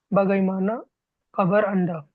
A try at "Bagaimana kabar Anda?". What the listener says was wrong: Yeah, that's good.